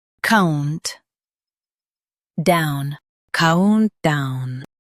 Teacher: Countdown. Stress count and say down smoothly.